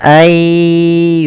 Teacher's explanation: karena di sini idgham artinya memasukkan, maka nunnya dimasukkan ke huruf ya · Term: idgham bi gunnah